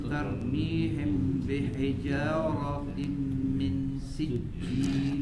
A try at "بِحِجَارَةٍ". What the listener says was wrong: اب یہ بحجارہ, اس کو بے پڑھیں گے تو مجہول ہو جائے گا, غلط ہو جائے گا. بحجارہ, بازیر بی, بحجارۃ.